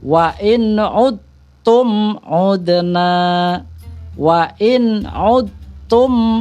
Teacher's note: Tetapi kalau sudah masuk ke dalam bacaan atau hukum idgham mutajanisain, bahwa huruf kolkolah huruf dal itu sudah hilang, sudah tidak ada lagi karena sudah terlebur di dalam huruf ta.